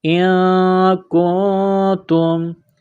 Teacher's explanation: نون ساکن کے بعد کاف ہے، غنہ کریں گے، آواز ناک میں چھپائیں گے